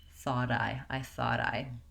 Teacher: when we link the final T to the next vowel, it becomes a flap